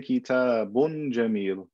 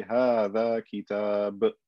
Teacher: I only pronounce the tanween, the extra noon, when I'm continuing on to the next word. If I stop, I don't pronounce the tanween.